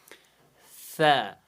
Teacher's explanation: یہ جو زبان ہے اس کی جو نوک ہے یہ آگے والے دانتوں کی کناروں سے لگنی چاہیے جب ہم حروف ث کا تلفظ کریں